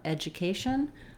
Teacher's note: So I think the easiest way to think about it might be edja, edja, education, or education. And then we have our same tion ending that just does our sh and our syllabic n without a lot of vowel